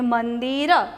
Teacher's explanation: મંદિર તો ન અનુનાસિક મૂક્યો છે તેનો ઉચ્ચાર ન જ થશે